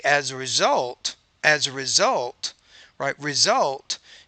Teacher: you have to make that higher pitch that second syllable because that's the primary stress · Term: word stress